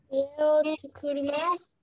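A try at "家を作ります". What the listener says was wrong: Rồi, con đọc đúng rồi đấy.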